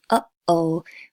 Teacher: The glottal stop is the sound that you hear in the middle of uh-oh